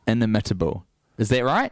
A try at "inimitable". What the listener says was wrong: No, You're putting the emphasis on the wrong syllable. Inimitable. Inimitable. Inimitable. No, you're saying inimitable.